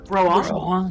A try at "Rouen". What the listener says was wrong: Yeah, Ron. More nasally. But, you know, because you roll the R and then you get the vowel garbage.